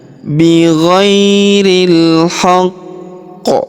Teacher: huruf ri langsung disambung masuk ke huruf lam yang berharakat sukun. Alifnya tidak dibaca.